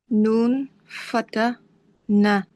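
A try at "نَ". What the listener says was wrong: Na. Very good.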